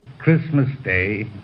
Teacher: He fully pronounced the diphthong, day.